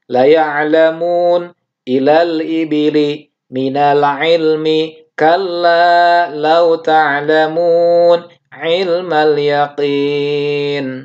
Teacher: Jadi tidak dibaca lo, tidak dibaca ilo ya. Jadi la semua dibaca tarqiq.